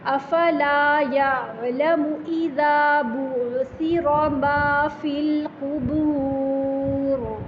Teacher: را ساکن ماقبل پیش ہے، تو اس کی وجہ سے ہم را کو موٹا پڑھیں گے